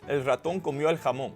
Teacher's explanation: You'll notice that ratón and jamón get some of that sentence level stress, but also comió kind of does too.